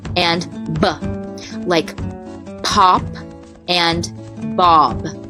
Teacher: a bilabial that means both lips are working together to make this sound